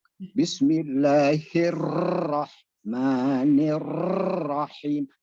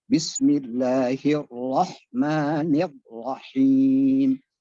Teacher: Getarannya tidak lebih dari sekali. Jangan sampai getarannya berulang-ulang kali.